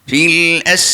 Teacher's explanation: Sifat sin ni dah ada sifat hamas dah, angin. Tapi angin yang berbentuk siulan. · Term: safir